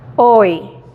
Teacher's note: Cambiamos de redondo, O, a I, donde es casi como una sonrisa, ¿verdad? Hoy. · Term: diptongo